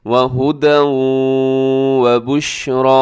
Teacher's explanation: ایسے را کے اوپر کھڑا زبر ہے لمبا کر کے